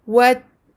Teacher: را فتح ألف مد را والترى همزة كسرة إي والترائي با كسرة بي والترائب. Deux kasra qui se suivent. On abaisse bien la mâchoire et on montre bien deux i.